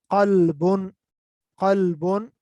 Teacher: इसी तरह एग्जैक्टली इस तरह कल्बुन, यानी ये भी ये हलक से अदा होती है, ठीक है, ये हलक के ऊपर वाले हिस्से से, यानी कॉफ वो वहां पर जुड़ जाए तो, यानी जबान, ये जो हलक का, थ्रोट का जो बिल्कुल ऊपर वाला पोर्शन है, वो अगर आपस में जुड़ जाए, ठीक है, तो उससे ये आवाज अदा होती है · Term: मोटा काफ